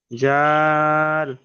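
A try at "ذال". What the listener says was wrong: এটা একটু পাতলা করে বলতে হবে, জিভের আগায় এবং সামনের উপরে দুই দাঁতের আগায়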